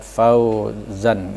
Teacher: Misalnya kalimat mad layin ini tadi dia berharokat fathah, dibacanya pun panjangnya cukup dua harokat